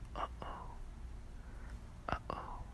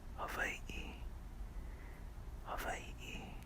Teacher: People usually confuse it for apostrophe, but just remember the distinction is the way it's written, which looks like a number 6, then that's the ʻOkina. The symbol signifies a glottal stop sound, similar to the sound you make when you say uh-oh